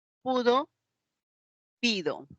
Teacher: son vocales Altos la u y la i